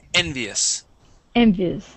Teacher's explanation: the us here is going to be more like an is sound · So stress at the very beginning.